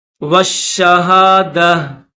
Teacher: اس گول تا پر جب ہم اسٹاپ کریں گے، وقف کریں گے تو اس کو ہا پڑھیں گے